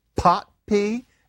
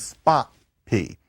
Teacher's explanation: You have puffy P and then you've got kind of boring P, non-puffy P.